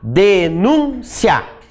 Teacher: ditongo oral porque ele sai pela boca